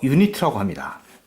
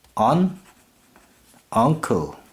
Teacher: 이 unit에서 u의 발음은 앞에 어의 발음과는 다르게 u라는 발음이 나옵니다.